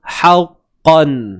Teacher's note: Qaf ni dia tebal tuan-puan. Huruf qaf ni dia tebal. Tapi ingat, tebalnya pada qaf sahaja.